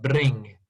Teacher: scottish people have rolling r